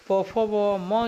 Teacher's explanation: जो होता है ये ओष्ठ से बोला जाता है